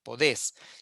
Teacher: En el caso de poder, lo mismo, cae el diptongo, queda la vocal abierta, la E, podés.